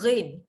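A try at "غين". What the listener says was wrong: ghin jangan baca ghim, dia bukan rapat bibir, ghin.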